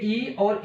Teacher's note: अब इसका अगला जो आता है स्वर, ये ई और ई आता है, दोनों ग्रुप में आते हैं, तो इनका जो उच्चारण स्थान होता है वो तालु होता है। अगर इनका उच्चारण स्थान तालु है तो इन व्यंजनों को बोलते हैं तालव्य व्यंजन, ठीक है, याद रहेगा।